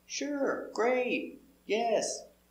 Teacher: With those one-word responses, intonation goes up.